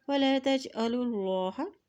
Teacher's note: اللہ کے نام سے پہلے پیش ہے تو اللہ کا نام موٹا ادا کیا جائے گا